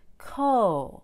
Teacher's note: So I said that the first part, co, has more energy. It's also higher in pitch